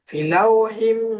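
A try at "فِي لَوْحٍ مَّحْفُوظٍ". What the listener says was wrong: ফি টানুন, ফি ইয়া মাদ্দা টানুন।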